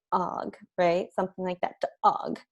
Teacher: I have that break in the middle of the vowel and it just kind of cuts off on me. And I can also feel that in my throat. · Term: strangled breaks